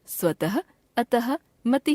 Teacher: हिंदी में अघोष ध्वनि अर्थात विसर्ग ध्वनि का उच्चारण समाप्त हो गया और इसे भी सघोष ह की तरह से ही बोला जाने लगा